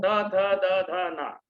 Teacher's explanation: तो दांत में जाकर जीभ लगती है, ये दंत्य कहलाते हैं।